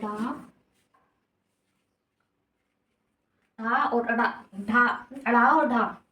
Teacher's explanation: वे व्यंजन वर्ण जिनको बोलने में जीभ झटके से ऊपर नीचे होती है। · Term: उत्क्षिप्त व्यंजन